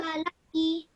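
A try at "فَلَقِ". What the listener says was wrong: Now remember again, this is a qaf and it's a thick and heavy sounding letter. So make sure you pronounce that correctly. Falaqi.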